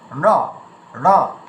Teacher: আমার ট উচ্চারণ করার সময় জিভটা যেখানে গিয়ে স্পর্শ হচ্ছে, ঠিক ন উচ্চারণ করার সময় সেখানে গিয়ে স্পর্শ হচ্ছে বলে নটা ঠিক এমন উচ্চারণ হচ্ছে, ন।